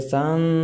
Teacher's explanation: غنہ کہتے ہیں ناک میں آواز لے جانے کو، جیسے سن، یہ ناک میں آواز گئی۔